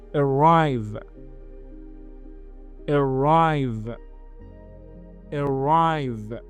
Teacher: The first vowel is called shwa. It is a very weak e. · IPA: /əˈraɪv/